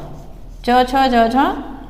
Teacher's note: जब हमारी जो श्वास वायु है वो हमारे मुख के अवयव से रगड़ खा के बाहर आती है, लेकिन स्पर्श संघर्षी कौन से हुए, जब हम इन वर्णों का उच्चारण करेंगे, इन व्यंजनों का उच्चारण करेंगे तो पहले श्वास वायु स्पर्श करती है मुख के अवयव से, फिर रगड़ खा के बाहर आती है